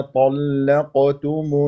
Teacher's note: قلقله صغرى لانها في وسط الكلام مع تفخيمها مرتبه رابعه